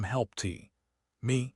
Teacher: you form the P, you form the T. but you don't release the explosion of air for the T. You hold the silence for a millisecond and then go straight into the M help T. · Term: held sound